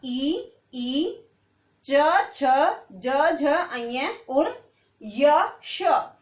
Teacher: Second देखो इचियस, इचियस का मतलब है ई, चवर्ग, य और श। जब बेटे आप इनका उच्चारण करोगे तो किसका प्रयोग होगा? तालु का।